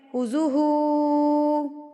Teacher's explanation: ہاں کے اوپر الٹا پیش ہے تو اس کو آپ نے ایک حرکت کے برابر کھینچ کے پڑھنا ہے